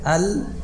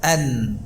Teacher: Lam keluarnya dari ujung sisi lidah, nun dari ujung lidah. Jadi nun, ya, itu di bawahnya makhraj lam.